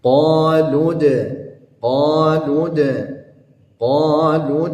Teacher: karena dalnya, huruf dalnya di situ berharakat sukun, maka dia berlaku hukum qalqalah sughranya, maka dipantulkan